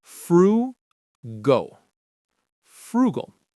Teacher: The stress is right there on that first syllable.